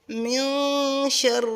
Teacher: نون کی آواز کو ہم چھپا لیں گے کیونکہ حروف اخفا میں سے شین آ رہی ہے